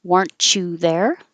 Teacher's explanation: there's a consonant after it we weren't there we weren't there if there's a y after it now the T and the Y will make a cha